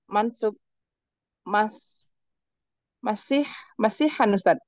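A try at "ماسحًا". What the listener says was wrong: Nah, jangan ditanwin, nggak boleh tanwin ya.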